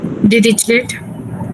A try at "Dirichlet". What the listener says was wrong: Dirichlet. So it's pronounced as Dirichlet. The T is silent, and this is Dirish, not rich.